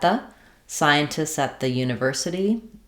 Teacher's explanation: Um, at the another very common common combination unreleased t to a th sound